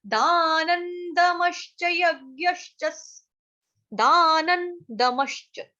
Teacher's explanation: न के ऊपर जो अनुस्वार है उसका उच्चारण होगा हलंत न से